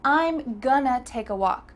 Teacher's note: The word to simply changed into a. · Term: reduction